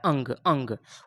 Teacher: सबसे ज़्यादा हवा नाक से निकलेगा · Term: अनुस्वार